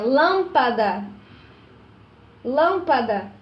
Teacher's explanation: Na lâmpada eu tenho a antepenúltima sílaba mais forte. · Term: proparoxítonas